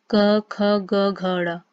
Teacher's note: इन सबका उच्चारण करने पर आप पाएंगे कि इनका उच्चारण आप कंठ से कर रहे हैं।